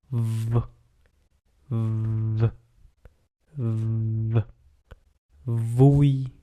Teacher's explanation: it is a voice sound so you have to vibrate your vocal cordus · Lightly press the back side of your lower lip against your upper teeth. Then release a stream of air over the lower lip with audible friction. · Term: V sound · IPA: /v/